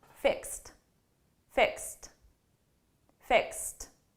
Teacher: if I didn't have a vowel after I just wouldn't pronounce the T